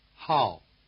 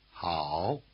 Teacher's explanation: the falling tone drops sharply through your full range while the low tone spends most of its time at the bottom. It helps that the falling tone is the shortest tone and the low tone is the longest.